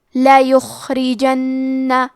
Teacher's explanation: کیونکہ را کے نیچے زیر ہے تو حرف را کا حکم ہے ترقیق، مطلب ہمیں را کو پتلی آواز میں پڑھنا ہے. آخری میں نون پہ تشدید ہے تو ہم 2 حرف کے برابر نون کو پڑھیں گے. · کلمت لا یخرجن میں لام پہ زبر ہے اور یا پہ پیش ہے، تو ہم یہ دونوں حرکات کو ظاہر کریں گے. حرف الخاء کو موٹی آواز میں پڑھیں گے اور کیونکہ یہاں خا ساکن ہے تو ہمیں خا کو ہمزے سے پڑھنا ہے.